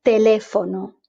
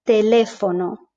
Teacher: it just flows nicely there's no aspiration